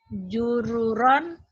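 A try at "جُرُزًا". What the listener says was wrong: Jururon. Beda titik ya. Beda titik. Jauh tuh jururon Juruzan ya. Beda titik coba. Juruzan gitu. Harusnya jururon jadi juruzan ya. Lupa titik ini.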